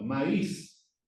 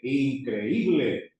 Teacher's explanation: Maior intensidade de voz na vogal fechada. Tem que ter acento.